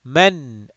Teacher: throat letter from the bottom most part of the throat men we do not stretch the nasal sound we make the noon sound clear and short